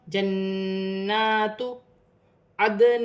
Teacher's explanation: دال ساکن ہے، دال کو حرف قلقلہ میں سے ہے، قلقلہ کے ساتھ ادا کیا جائے گا